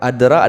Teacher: Adra adalah qalqalah sugra ataupun disebut dengan qalqalah kecil. Ya, jadi hanya kita pantulkan sedikit.